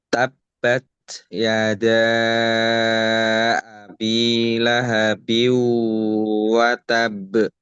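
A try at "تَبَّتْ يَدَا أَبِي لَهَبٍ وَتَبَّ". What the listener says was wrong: Nah, watabba di sini banyak agak ditahan lebih lama lagi. Ya, bukan lebih lama sih sebenarnya lebih kuat gitu. Tab tab ya biar kol-kolahnya itu pantulannya itu lebih sempurna gitu.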